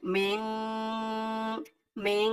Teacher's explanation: অর্থাৎ নাকের ভিতরে লুকিয়ে গুণনা করে পড়তে হয়